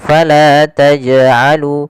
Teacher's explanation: Qalqalah artinya memantul. Maka jangan kita baca dengan bacaan taj'alu yang artinya dia tidak mantul. Maka harusnya jim harus mantul.